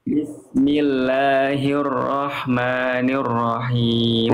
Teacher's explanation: himnya dari tengah tenggorokan berbisik H kecil